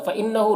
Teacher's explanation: فإنہ نون مشدد غنہ کے ساتھ پڑھیں گے